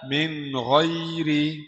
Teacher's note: نون ساكنة مظهرة قبل الغين المفتوحة